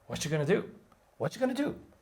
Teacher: do in speaking is just as long as the five words before that